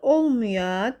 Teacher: Vurğu sözün son hecası üzərindədir. Vurğu sözün son hecasına yox, birinci hecasına düşür.